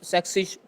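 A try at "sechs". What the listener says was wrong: अरे जेड के साथ जेड के साथ एस के साथ नहीं नहीं नहीं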